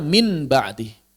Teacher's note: ba seperti yang populer Min ba'di maka dia diubah menjadi mim Kenapa diubah menjadi mim karena beratnya pengucapan Nun bertemu dengan ba Kenapa pilihnya mim karena Mim punya kemiripan atau kesamaan dengan Nun